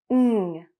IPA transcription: ŋ